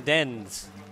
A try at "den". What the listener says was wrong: Den den. Now it sounds to me like you said den, dead, dend. So I'm like, it's den, but what's dend? Because it's just den with a D at the end, but you pronounce the D.